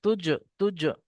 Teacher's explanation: এখানে জিমটা কলকলা হবে